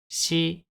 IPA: ɕi